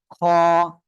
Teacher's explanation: গলার শেষ ভাগ থেকে বাংলা খ অক্ষরের মত উচ্চারণ হবে এক আলিফ টান হবে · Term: ক্লিয়ার খ